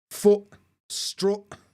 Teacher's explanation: vowel sound yeah but in Sheffield we don't do that either for us they both got same vowel sound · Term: foot strut split